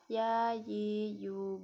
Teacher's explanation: dikeluarkan dari tengah-tengah lisan yang menyentuh dengan langit-langit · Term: huruf ya